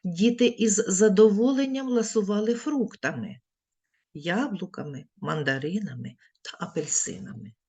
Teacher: узагальнювальне слово вимовляємо з підвищеною інтонацією після нього робимо паузу із знижуємо Голос Діти із задоволенням ласували фруктами яблуками мандаринами та